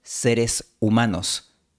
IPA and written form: 'se.ɾes u'ma.nos (seres humanos)